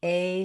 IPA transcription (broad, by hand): eɪ